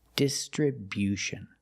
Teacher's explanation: We move the stress to the first and third syllables. · Make that y-yu sound after the b.